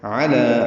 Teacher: علی عین وسط حلق سے ادا کریں گے، لام کو نرمی سے یعنی باریک پڑھیں گے، 2 حرکات لمبا کریں گے